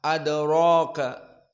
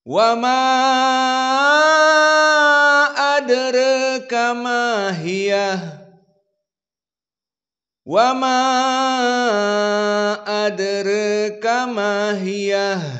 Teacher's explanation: qalun membaca adraka seperti jumhur bil fathah adraka. Adapun Wars bitaklil khusus adraka.